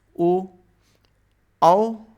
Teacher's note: कंठ और ओष्ठ दोनों आते हैं। जैसे ओ में उ और ओ, औ में आ और ऊ, या फिर आ और ओ मिलके बनाते हैं, तो इनका उच्चारण स्थान कंठोष्ठ हो जाता है।